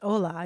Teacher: the word starts with an H, although it's hola, you don't pronounce the H